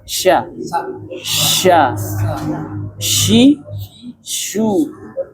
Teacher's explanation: dia makhrajnya di tengah-tengah lidah. Jadi, bibir tidak berpengaruh.